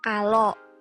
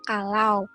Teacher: kesalahan pelafalan yang dilakukan pada diftong AU menjadi O. Kalau, padahal kata seharusnya kalau.